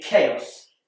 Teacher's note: CH is more commonly pronounced CH like in church but in chaos it's a c like in cat